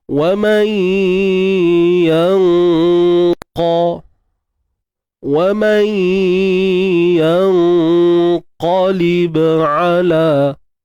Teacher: Ikhfa, sembunyikan nun mati di sisi huruf qaf. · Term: ikhfa hakiki